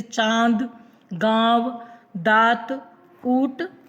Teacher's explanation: उसके बाद हम लोग पढ़ा अनुनासिक। अनुनासिक का प्रयोग जब हम बोलते हैं, उच्चारण करते हैं तो नाक और मुंह की सहायता से बोलते हैं